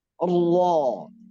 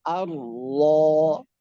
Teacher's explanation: itu itu namanya apa yang disebut tadi Bukankah itu ujung lidah Tapi saat dibaca tafkhim naik dia ke punggung lidah